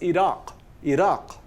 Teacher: It's not Iraq, it's Iraq. Iraq, with a nice hollow Q sound in the back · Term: uvular stop